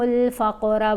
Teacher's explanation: قاف کے اوپر کلکلا، فقرہ